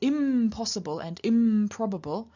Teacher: with the n changing to the labial nasal m · the N changing to the labial nasal M in front of the labial stop P. So it's not impossible, but impossible.